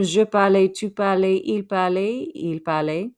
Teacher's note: We don't pronounce those final consonants.